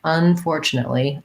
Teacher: unfortunately, has main stress on the for, but a little bit of stress on the un too.